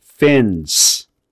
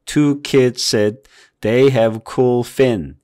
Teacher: 끄트머리 끝에 있는 S 소리를 거의 안 내요